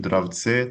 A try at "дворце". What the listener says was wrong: Tapi ini tadi kamu kebalik pengucapannya. Dwarits. Coba Dwarits sekali lagi. Dwarits ya gitu. Dwarits.